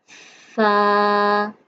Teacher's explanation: सा जब हम पढ़ेंगे तो सीटी की आवाज़ बिल्कुल नहीं आनी चाहिए।